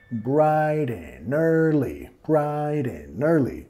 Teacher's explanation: Brighten, brighten, bajando, comiendo la D, brighten, brighten, brighten early. Y vinculando de la N en and al early